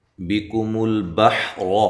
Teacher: بِكُمُ الْبَحْرَ، کاف اور با کو باریک پڑھنا ہے، یہاں لام کو ہلانا نہیں ہے۔ حا کو واضح نکالنا ہے، را کو موٹا پڑھنا ہے